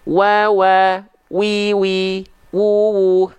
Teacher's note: kedua bibir dengan posisi maju seperti mengucapkan huruf u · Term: huruf wau